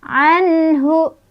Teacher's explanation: Anhu, an izhar halqi tepatnya ya, karena ada nun sukun bertemu dengan huruf H. Huruf H adalah huruf halqi atau huruf tenggorokan, sehingga dibacanya nun sukunnya jelas